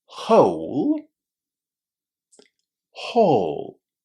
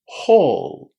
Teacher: Whole is pronounced with the O sound. We're connecting O and U.